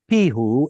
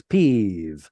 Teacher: we stopped pronouncing the hey, and then for whatever reason, we changed vav from a W into a V, and that somehow becomes peeve.